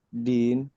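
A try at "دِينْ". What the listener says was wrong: Panjang jadinya. Din gitu. Karena jadi mad arid disukun.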